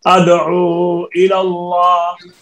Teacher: واو مدہ لکھی ہوئی ہے، رسم میں موجود ہے، بعد میں حمزہ ہے، یہاں پر یہ مد منفصل ہو جائے گی